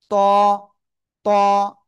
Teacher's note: শুধু ত না ত মোটা আওয়াজে হবে।